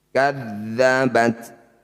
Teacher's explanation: Kadzabat, huruf ta yang bertanda sukun, berharokat sukun. Ini punya sifat namanya hamas, jadi harus mengeluarkan percikan udara ketika membaca tak sukun. Kadzabat, sedikit saja, namanya percikan berarti sedikit.